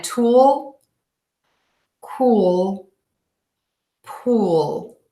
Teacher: make sure that you are touching the tip of your tongue to the back of your top front teeth for that L sound. If you're not touching your teeth, make sure it's sort of like touching that ridge between your teeth and the skin on the roof of your mouth.